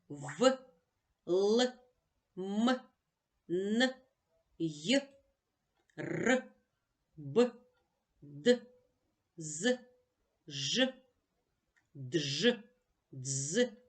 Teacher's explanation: уроку І пригадаємо що приголосні звуки поділяються на дзвінки і глухі приголосні які вимовляються з участю голосу і шуму тобто дзвінко назива ться дзвінкими до дзвінких приголосних належать давайте разом